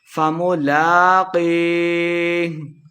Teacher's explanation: قدحا فملاقیہ، لام کے اوپر کھڑی زبر 2 حرکات لمبا کر کے پڑھیں گے۔ قی یا مد ہے تو قاف کو موٹا بھی پڑھنا ہے، 2 حرکات لمبا کر کے بھی پڑھیں گے۔